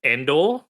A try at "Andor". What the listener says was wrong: Andor. Endor is an E, Andor is an A.